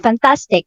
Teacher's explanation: the primary stress is on the middle, tas, fantastic